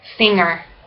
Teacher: Big N, voiced, velar, nasal, consonant